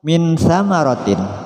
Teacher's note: nun mati bertemu sa di sini hukumnya ikhfa, memasukkan suara nun mati pada sa disertai dengung.